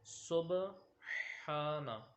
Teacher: حا جو ہے وہ حلق کے درمیان سے، جیسے آپ سانس لیں تو اس طرح جو ہے وہ آپ کی حا کی آواز نکلے گی۔ تو یہ حا جو ہے وہ ہم نے ادا کرنی ہے، سبحانہ۔